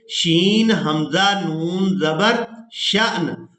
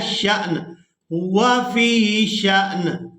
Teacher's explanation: شین کو حمزہ ساکن کی وجہ سے جھٹکے کے ساتھ ادا کرنا ہے